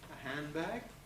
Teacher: Here we have ND at the end of the first syllable, consonant of B at the beginning of the next. So that D is likely to drop, a handbag.